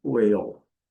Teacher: O A com o seu som tradicional de EI. E o L, dark L, whale. Aqui é aquele conjunto de question words, what, when, where, why.